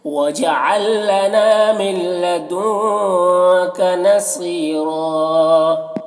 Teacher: لدن کا کہ نون میں اخفا ہو رہا ہے۔ نصیرہ صاد کو پر پڑھنا حروف مستعلیہ میں سے، اور یہاں پر یا مدہ ہے، اور را کو یہاں پر پر پڑھیں گے، وقف کی صورت میں ایک زبر کے ساتھ الف پڑھیں گے، جیسے وَجَعَل لَّنَا مِن لَّدُنكَ نَصِيرًا، اس طرح سے۔